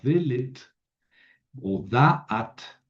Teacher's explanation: el acento cae en la primera en la primera sílaba